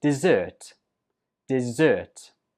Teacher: Where did you hear the stress? Right, on the 2nd syllable.